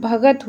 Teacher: क जो होता है वो ग में परिवर्तित हो जाता है